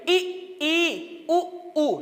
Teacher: जो स्वर बोलते समय मुख लगभग बंद रहता है, पूरा नहीं बंद होता है, लगभग बंद रहता है। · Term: संवृत्त स्वर